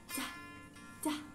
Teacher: Ada udara yang muncul atau dihembuskan secara tiba-tiba.